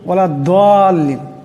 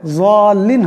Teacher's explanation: এই জাদের উচ্চারণটা হবে জিহ্বার একটি কিনারা এবং উপর পারির সোয়ালের দাঁত, তার থেকে উচ্চারণ হলে যাল্লিন হবে, দাল্লিন হবে না। জাদের মখরজটি হলো জিহ্বার একটি কিনারা এবং উপর সোয়ালের পারির দাঁত, এই দুটা একসঙ্গে মিলিয়া জাদ উচ্চারণ হবে, তখন উচ্চারণটা হবে যাল্লিন, এই উচ্চারণ হবে, দাল্লিন হবে না।